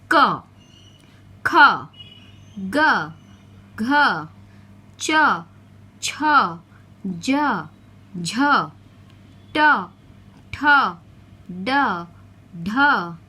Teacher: इन व्यंजनों के उच्चारण में वायु केवल मुख से बाहर निकलती है। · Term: मौखिक व्यंजन